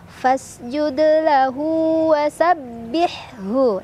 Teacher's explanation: Hu mad silah qasirah karena ada hak domir diapit oleh dua huruf hidup yaitu lam dan waw, ya, dan huruf setelahnya bukan hamzah, bukan a, bukan i, bukan u. Cara bacanya, hak domir dibaca dua harokat.